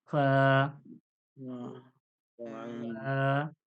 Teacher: দুটো দুটো ঠোঁট ঠোঁটের মাঝখান থেকে হাওয়াটা বার হয়ে যাবে